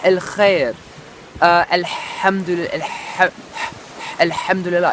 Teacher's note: it's like a ha, which is a soft ha, but it's from the back of your throat. The way it was described to me was like if you're breathing on glass and you want to steam up the glass, and I'm just going to bring you a bit closer, you can kind of feel like you can kind of feel the sound. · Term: the Arabic ha